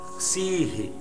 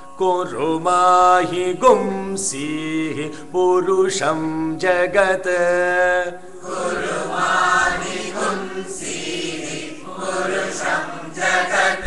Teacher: there is a ha there, there is a visarga, sihi. Yeah, so when you are saying that sihi should be heard.